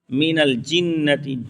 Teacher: जीम बीच जबान तालु से मिलकर जीम अदा करेंगे